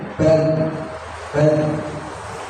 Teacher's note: huruf dal ini punya sifat ar-rafah. Jadi dia suaranya itu ngalir